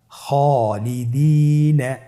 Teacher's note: খায়ের পরে যেহেতু আলিফ হরফটি রয়েছে তাহলে আপনার আলিফ হরফটিকে মোটা করে পড়তে হবে।